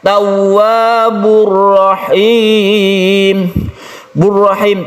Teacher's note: masjid wauh biasa saja ini jangan digunakan artinya panjangnya biasa saja kita tekan ke huruf wau tanpa berdengung tawwa langsung tidak dipanjangkan tahun bukan tapi langsung kan tawabur rahim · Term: idgham bilagunnah